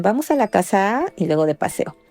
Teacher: en México se observa el ascenso más el alargamiento silábico al final de una frase